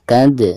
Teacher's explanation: Cara membacanya itu harus ada pantulan ya. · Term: qalqalah sugro